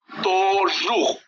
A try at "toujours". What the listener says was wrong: তু, ও ইউ মিলে উ হয়, তু, toujours